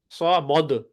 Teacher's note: سا کے بعد میم کو موٹا نہیں کر دینا، سا مد. ٹھیک ہے نا، تو یہ غلطی ہوتی ہے عموماً، کیونکہ آپ سو کے بعد موٹا اگلا آگے موٹا کرتے ہیں، سو مد.